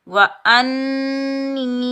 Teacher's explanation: नून मुसद पर हम गुन्ना करेंगे · نون مشدد پر ہم غنہ کریں گے اور یہ یائے مدہ ہے، اس کو ہم ایک الف کی مقدار کھینچ کر ادا کریں گے۔